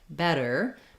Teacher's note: Double T in better makes a flap sound